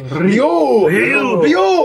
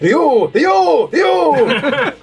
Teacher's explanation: It's supposed to be like one syllable, and you're supposed to roll the R